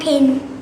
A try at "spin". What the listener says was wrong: Stand is right, and is right, but pin is not right. It's something else. The last word. No, it starts with a S.